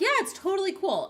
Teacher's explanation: I'm going up at the end of my sentence.